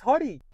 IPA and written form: ˈhɜːri (Hurry)